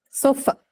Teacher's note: In the word sofa, you find the unstressed vowel schwa at the end of the word, right? So it's found the word final position.